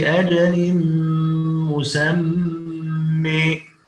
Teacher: وسخر الشمس والقمر كل يجري لأجل مسمى. طبعا هنا كلمة مسمى عند الوقف عليها نقف عليها بألف مقصورة ممالة، أما عند الوصل فنجد أنها منونة بتنوين الفتح.